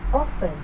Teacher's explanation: the Praat display shows a strong waveform during the stressed vowel o in the first syllable, off. This segment has the highest amplitude and intensity, indicating primary stress on the first syllable.